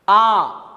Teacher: ये दीर्घ है क्योंकि इसके लिए इसे दोगुना समय लगता है।